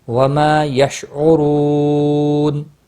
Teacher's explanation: ہم میم ساکن کے بعد واو آیا ہے، اظہار شفی ہوگا، اخفاء نہیں ہوگا۔ وما یشعرون را پیش کی وجہ سے پر پڑھا جائے گا، واو مدہ ہے، ایک الف کے برابر کھینچ کر پڑھیں گے، اور وقف کی صورت میں نون ساکن پڑھا جائے گا، وقف بالاسکان ہوگا، 3 سے 5 الف کے برابر کھینچ کر وقف کریں گے۔